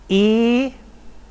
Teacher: another front vowel, which would now be mid-high